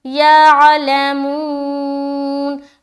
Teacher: منہ میں کھینچ رہے واو مدہ کیونکہ واو ساکن اس سے پہلے پیش